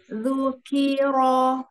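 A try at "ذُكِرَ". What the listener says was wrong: Ujung-ujungnya jangan dipanjangkan ketika fathah.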